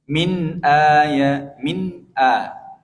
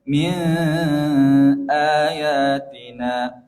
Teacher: nun sukun bertemu huruf hamzah. Bertemu huruf hamzah dibaca jelas